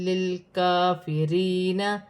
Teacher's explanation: کاف پر کھڑی زبر ہے، ایک الف کی مقدار کھینچ کر پڑھا جائے گا